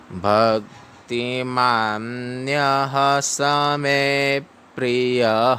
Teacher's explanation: य के बाद में विसर्ग है इसको ह पढ़ना है ह को फास्ट पढ़ना है